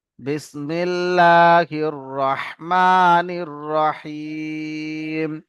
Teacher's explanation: মিম খাড়া যাবার মা, খাড়া যাবার আলিফ মাদ্দার সমতুল্য, এক আলিফ পরিমাণ টান হবে।